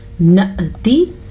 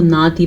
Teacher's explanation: تو حمزہ پہ جب بھی ساکن آئے تو ہلکا سا جھٹکا پیدا ہوتا ہے، یعنی کہ نون زبر حمزہ نہ یا نون زبر حمزہ ساکن نہ، ٹھیک ہے۔